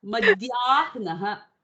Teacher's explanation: Whenever you have this aha sound in the middle, it just goes as a puff of air. When it is at the end, we are currently pronouncing it.